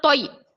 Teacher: تو زبان کی نوک کو سامنے کے دونوں دانتوں کے جڑ میں لگانے سے تو ادا ہوتا ہے، یا زبان کے بیچ کے حصے سے یا ادا ہوتا ہے۔ یا ساکن سے پہلے زبر یائے لین، یائے لین کو ہم نرم آواز کے ساتھ جلدی ادا کریں گے، تو یا زبر توئی۔